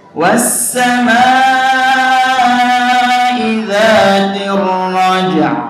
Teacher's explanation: Di situ ada dua sukun ya, karena kita wakaf di ar-raja' dua sukun ya, dua-duanya harus dinampakkan, baik itu jim sukun dan ain sukun, ain wakaf maksudnya ya.